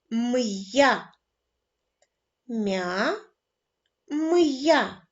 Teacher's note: якщо вживається апостроф то перший звук ми вимовляємо твердо